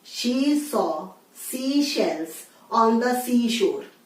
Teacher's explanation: श बोलते समय आपकी जीभ तालु पर जानी चाहिए।